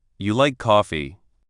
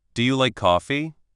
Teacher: Statement. You like coffee? Falling tone. Question. Do you like coffee? Rising tone.